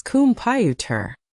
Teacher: We push all our energy into the middle and we let the beginning and the end turn into that lazy little sound. It becomes computer.